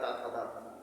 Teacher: दंत से त वर्ग बोले जाते हैं।